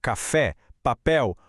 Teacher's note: Aqui, a força da pronúncia está na última sílaba. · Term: oxítona